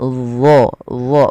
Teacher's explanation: dia mirip dengan zal, tapi pangkal lidahnya terangkat